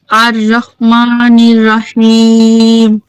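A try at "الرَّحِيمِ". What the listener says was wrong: রা না বলে আমরা কি বলবো? রহিম।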